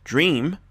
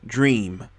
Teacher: you hear the E, but you don't hear the A. So the E is pronounced long